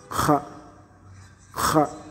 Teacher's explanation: la partie postérieure de la langue monte vers le palais mou en étouffant légèrement le passage de l'air. Donc c'est Kha, se prononce légèrement au dessus.